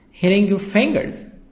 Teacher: Here T, soft D between two vowels, I and R.